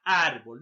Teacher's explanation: la mayor fuerza de voz está en la penúltima sílaba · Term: grave, graves o paroxítonas